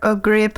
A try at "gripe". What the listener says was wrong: And when we pronounce the first one, we call it a gripe. Just like a grape, like you eat, but with a long I, a gripe. Yes, gripe.